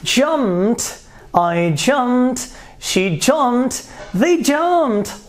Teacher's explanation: it is unvoiced because you don't feel any vibration right here